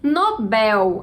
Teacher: a sílaba tônica é o bel, é também uma palavra oxítona.